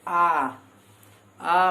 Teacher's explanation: बोले आ मतलब इसमें अ और अ दोगुना समय लगा और बोलने में भी आ हो रहा है, उसे हम दीर्घ स्वर कहते हैं